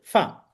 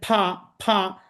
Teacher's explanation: উপরের দাঁত নিচের ঠোটের সাথে লাগিয়ে স্বাভাবিক উচ্চারণ